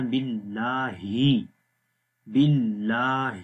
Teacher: آخر میں ہا کی آواز ہے جو کہ اگین گلے کے سب سے نیچے والے حصے سے پڑھی جائے گی ، جہاں سے حمزہ کو ہم نے پڑھا تھا باللہ، تو